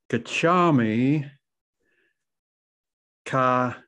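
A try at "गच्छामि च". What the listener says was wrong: Cha, not ka, cha.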